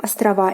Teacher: Again, the A ending is stressed in the plural form.